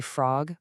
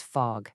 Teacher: A child is trying so hard to say frog, but what comes out is fog. That tricky little R sound just gets dropped.